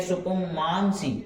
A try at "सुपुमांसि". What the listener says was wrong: सुपुमांसी बोलो, दोनों साथ में बोलो फटाक से।